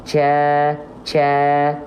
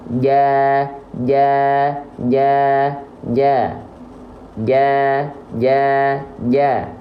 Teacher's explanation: huruf Jim sifatnya bukan hams tapi jahr jahr jadi dia tertahan nafasnya